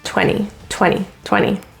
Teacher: n with t after it typically is dropped